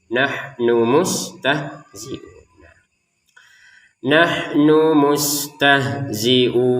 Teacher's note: jangan nunnya ini pendek langsung nyambungnya ke mim